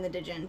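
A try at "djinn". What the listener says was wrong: Jin. It's Jin. The D is silent.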